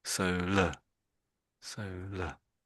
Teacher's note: with the AR on the end is just really making that schwa sound, the schwa sound.